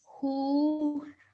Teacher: So we're stretching that sound out for 2 seconds because of the inverted dhamma.